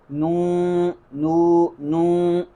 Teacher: نو پڑھیں گے تو آواز ناک میں چلی جائے گی